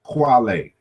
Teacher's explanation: this K in the initial position becomes rounded.